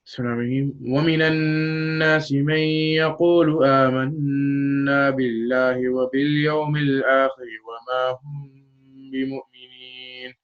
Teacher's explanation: the sound emanates from the nose and is observed on the noon shadda and meem shadda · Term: ghunna